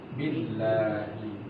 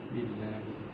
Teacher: Jadi hamzahnya ini langsung digabung dengan huruf ba. Billahi. Ini adalah hamzah wasal sebetulnya.